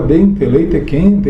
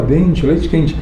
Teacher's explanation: Da mesma maneira que você ouve em São Paulo, qualquer E, letra E, no final de uma palavra vai soar como I · A gente muda não só o T para um TCH, leite, e o E para I